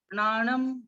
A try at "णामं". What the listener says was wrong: नाणम नहीं है, नामम बहुत अच्छा, आप नाणम बोल दिए थे तो नामम।